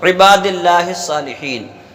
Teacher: جو لفظ عباد ہے اس کے اندر ہم با کو ایک الف کے برابر کھینچیں گے